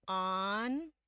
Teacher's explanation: A-nya tebal bunyinya. A. A. Mulutnya kebuka lebar.